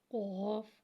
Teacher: قوف، قوف کو ایک الف یعنی 3 مقدار کھینچ کے پڑھیں گے۔ قوف حرف مستعلیہ ہے، لہٰذا اسے ہم موٹا ادا کرتے ہیں۔ قوف کی آواز حلق سے موٹی ادا ہوئے گی۔